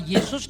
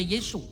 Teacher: Orang Tionghoa tidak bisa ngomong huruf S di akhir nama-nama Yunani. Maka Yesus dibaca Yesu.